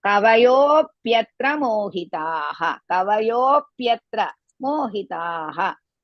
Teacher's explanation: Kavayo, kava, both the aksharas are hrisva, yo, dirgha. There is an S mark, you can drag little.